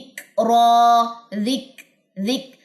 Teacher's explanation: اور اس کے بعد کاف میں ہمس ہے، حروف محموسہ میں سے ہے، یعنی کہ کاف کے اوپر جب جزم آئے گی تو اس کو ادا کرتے ہوئے آپ کا سانس جاری ہوتا ہے